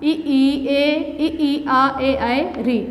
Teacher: आवृत्तीय स्वर जिसमें होंठ गोल ना बने, ठीक है, जो वृत्त ना बने, ई, ए, आ, ए, री, ये हो गया।